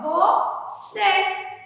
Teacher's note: Aqui é o acento circunflexo, que é usado para quê? Fechar o som da vogal E